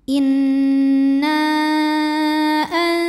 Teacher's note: Nun dipanjangkan boleh empat boleh lima harakat · Maka nun dipanjangkan boleh 4 boleh 5 harokat. Inna berikutnya ada hukum ikhfa awsat karena ada nun sukun yang menghadapi huruf zai. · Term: Mad Jaiz munfasil, mad jaiz munfasil